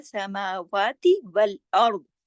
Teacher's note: रा और द्वाद दोनों मोटे, क्योंकि रा कंडीशनल है, उससे पहले जबर है और उसका असर पड़ रहा है जबर पे, ठीक है।